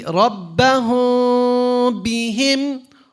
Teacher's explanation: The meme sakin, when it's followed by a ba, it's called the ikhfa shafawi.